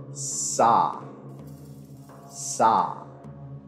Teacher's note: The folded claw is a voiceless alveolar fricative and it is produced with the tip or blade of the tongue against the alveolar ridge